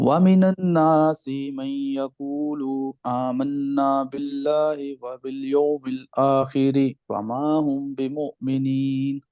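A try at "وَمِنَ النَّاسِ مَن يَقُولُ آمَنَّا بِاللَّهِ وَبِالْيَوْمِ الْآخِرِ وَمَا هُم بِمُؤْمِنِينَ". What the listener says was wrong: अच्छा, यहाँ पर आप देखिए, यहाँ चार जगह पे आपने गुन्ना करना है, इसको गुन्ना बोलते हैं, गुन्ना। अगर आप लिख सके तो गुन्ना का मतलब है नाक को आवाज में लेके चले जाना, ठीक है। तो आप देखो, आप कहते हैं वमिनन नासि मन यक़ूलु आमन्ना बिल्लाहि व बिल यौमिल आखिर वमा हुम बिमुमिनीन।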